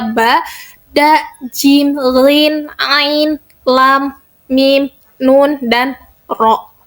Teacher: Nah, pada jahr dan hames ini pita suara itu ada yang bergetar atau pada jahar ya jahr. Nah, pada jahr ini pita suara itu bergetar. Nah, huruf-hurufnya itu ada ba, da, jim, gin, ain, lam, mim, nun, dan ro.